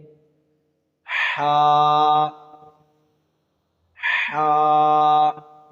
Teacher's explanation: حا حلق کے وسط یعنی درمیان والے حصے سے ادا ہوتا ہے. اگر آپ تھوڑی سی کوشش کریں گے تو انشاءاللہ آپ سے بھی ادا ہو جائے گا.